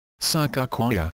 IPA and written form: səˌkɑːkəˈwiːə (Sakakawea)